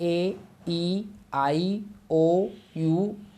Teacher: जब आप बोलते हैं ए, ई, आई, ओ, यू, कहीं भी कुछ टच नहीं हो रहा है, वहाँ भी आप देख रहे हैं, तो इसीलिए उनको भी वॉवेल बोला जाता है ना।